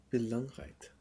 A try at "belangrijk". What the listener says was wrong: Rijk. With no T. belangrijk.